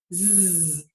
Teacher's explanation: It is sort of a strong, longer voiced sound in English. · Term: Z sound